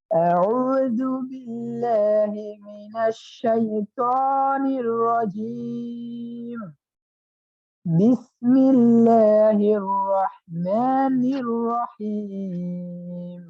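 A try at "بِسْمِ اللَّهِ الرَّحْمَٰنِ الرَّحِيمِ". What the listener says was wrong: হ্যাঁ, বাকে এত বেশি শক্ত করা যাবে না, যেহেতু দুই ঠোঁটের ভেজা জায়গা হইতে। যদি বিসমিল্লাহ শক্ত বলি তাহলে কি চাপ পড়ে যায়। বিসমিল্লাহ বি বাবি বু, বিসমিল্লাহ বাবি, একদম নরমালি।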